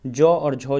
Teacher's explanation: जौ और झौ जो है ये तालव्य व्यंजन है, तालु से निकलती है आवाज़